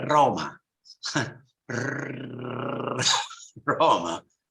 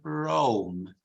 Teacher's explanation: the tongue will meet the palate and will hit it many times roma roma in English it never touches the palette you say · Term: rolled